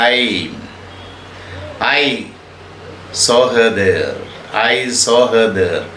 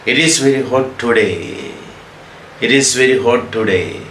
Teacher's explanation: ഒരു സ്റ്റേറ്റ്മെൻറ്റ് പറഞ്ഞാൽ ഐ saw her there, ഇങ്ങനെ ഡിസെൻഡ് ചെയ്യുകയാണ് സിലബിൾസിൻ്റെ പിച്ച് എന്ന് പറയുന്നത് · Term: falling intonation